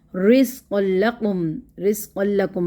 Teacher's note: تنوین کے بعد یرملون کا لام تو ادغام ہوگا لیکن بغیر غنہ کے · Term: بغیر غنہ کے ادغام